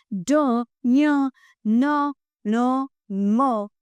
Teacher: नासिक्य व्यंजन जिन व्यंजनों का उच्चारण नासिका की सहायता लेने के साथ में होता है, वह नासिक्य व्यंजन कहलाते हैं।